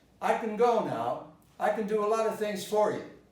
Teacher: You will notice that I didn't stress can.